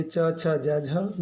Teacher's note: च वर्ग जो है वो तालव्य के साथ स्पर्श संघर्षी भी कहलाता है